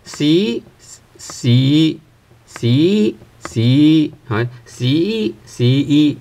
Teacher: we start with a lower pitch and then eventually you have to raise the pitch towards the end